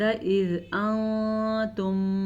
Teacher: نون ساکن کے بعد تا حروف اخفا میں سے ہے تو ہم اخفا کا قاعدہ ادا کریں گے · میم ساکن کے بعد میم آ گیا ہے تو دونوں کو آپس میں ملا کے پڑھیں گے